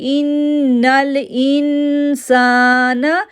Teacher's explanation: ان پہ اخفا غنہ کیا کیونکہ نون ساکن کے بعد سین لیٹر رہا ہے، سین کو 2 سیکنڈ کے لیے کھینچا، دین ہم نے پڑھا لا یطغی.